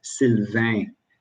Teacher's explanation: a vowel and an n the word ends in n um the n is never pronounced it's just an indication to nasalize the preceding vowel sound